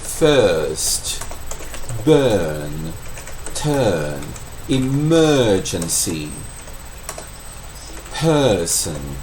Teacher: Isso é apenas a vogal É como se usasse o R como vogal. Eu falo que é a vogal de cachorro zangado.